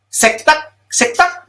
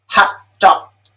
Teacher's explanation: I'm putting a glottal stop at the end of the syllable even before I get to any kind of a k sound or a t sound.